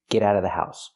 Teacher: you don't have to pronounce the v sound in of because it's before a consonant